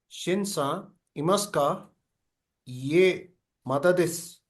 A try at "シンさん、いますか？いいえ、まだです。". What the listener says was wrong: Yes, very good.